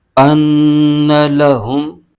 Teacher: نون مشدد میں ہمیشہ غنہ ہوتا ہے تو یہاں غنہ بھی ہوگا۔